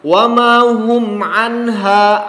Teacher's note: anha nun mati kemudian di depannya ha, izhar anha jelas pelafalannya. Anha ha panjang.